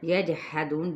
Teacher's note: جیم پہ قلقلہ، دو پہ واو مدہ